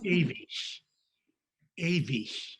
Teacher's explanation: G, when it's preceded by a closed vowel, is CH.